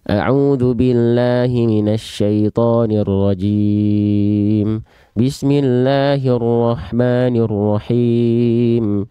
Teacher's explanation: Contoh bacaan yang ngajinya seperti orang yang bergumam karena dia tidak menyempurnakan itmamul harokat